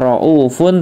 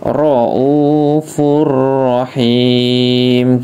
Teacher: Ada dhammah tanwin bertemu dengan huruf ra ya. Jadi tidak cuma huruf lam tapi huruf ra juga dimasukkan dengan tidak dengung. Jadi tidak raufun tapi raufur rahim gitu ya. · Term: idgham bila gunahnya